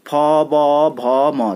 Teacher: प बोले होंठ चिपकते हैं ना गाइज, फ ब भ म, तो आपको बिना होंठ के नहीं किया जाएगा, तो ये ओष्ठ वर्ग आते हैं।